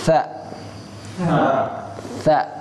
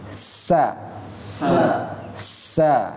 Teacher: Torful lisan, ujung lidah. Bedanya, huruf tha kita harus meletakkan ujung lidah di ujung gigi seri atas. Tha, ya caranya. Kalau sin tidak menempelkan lidah kita ke gigi seri. Dan desisannya deras.